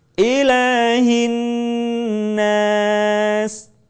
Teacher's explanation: jangan lupa ilah tidak boleh kepanjangan cukup diayun